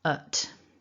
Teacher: And then thinking about our weak form, we need that relaxed schwa sound, which lies flat, the tongue is flat in the mouth, and relaxed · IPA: /ə/